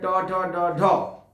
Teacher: এই ধ্বনিগুলো উচ্চারণ করার সময় জিভ গিয়ে মূর্ধাতে লাগছে, মানে মাড়িতে স্পর্শ করছে, তারপরে উচ্চারিত হচ্ছে, তাই এই ধ্বনিগুলোকে বলা হয় মূর্ধন্য, মূর্ধন্য ব্যঞ্জন।